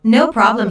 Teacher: no problem here means don't worry notice the stress on no the receptionist laughs first then puts emphasis on no by lengthening the word